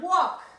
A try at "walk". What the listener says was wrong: Walk. Walk. Acordate que esta L no suena, ¿eh? No me pronuncies walk. Walk. Como walkie-talkie. Walk. Walkie-talkie.